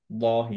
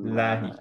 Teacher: লা হেভি হবে না এই লফজুল জালালের ক্ষেত্রে যদি সামনে ফাতহা অথবা দম্মা না থাকে